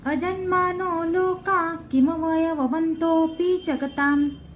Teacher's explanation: ता वर जो अनुस्वार आहे त्याचा उच्चार म करायचा आहे